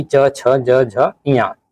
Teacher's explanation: तालव्य व्यंजन वे व्यंजन होते हैं जिनके उच्चारण में जीभ के पिछले भाग को तालु से संघर्ष करना पड़ता है। वैदिक संस्कृत में च वर्ग के समस्त अक्षर इसी निसर्ग के हैं, जैसे कि च, छ, ज, झ, ञ।